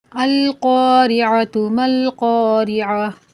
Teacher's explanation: اور دوسرے قاریہ میں ساتھ ملا کر نہیں پڑھ رہے، وقف کر رہے ہیں، تو یہاں پر یہ گول تا ہا پڑھی جائے گی۔ گول تا وقف کی حالت میں ہائے ساکنہ سے بدل جاتی ہے